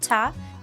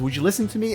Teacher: So listen and to merge together, listen to, but then we lose the T here, listener, listen to me. Yeah, and to is reduced also to a schwa sound, so it becomes ta